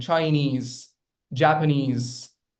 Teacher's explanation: 2-syllabic words also, where the stress lies on e's at the end